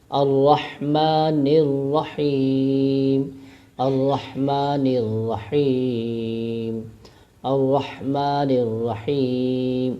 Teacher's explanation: وقف یعنی 2 الف یا 3 الف کی مقدار لمبا کریں گے